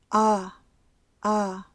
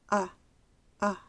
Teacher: Ese sonido más parece a la U corta, el sonido en up. La posición de la boca para pronunciarlos es igual. Escucha la U corta, y la schwa, La diferencia está en la duración. Veamos algunos ejemplos de palabras que se pronuncian con la schwa.